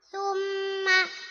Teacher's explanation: gunna musyaddada sebab mim yang ditasydid